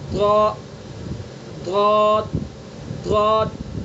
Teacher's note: بائیں کروٹ کو بائیں ڈاڑ پر لگائیں گے